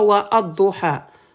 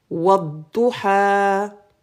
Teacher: Quand je mets wa, on fait la liaison, on va directement à l'em.